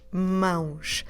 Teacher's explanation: then we add the sh sound with the letter S at the end · we have a nasal diphthong because we have A, O